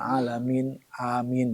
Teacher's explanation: Min itu adalah panjang mad arid li sukun ya